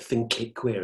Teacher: we've got the plosive at the end of think again. But this time, look at the way it emphasizes the sound, think it queer.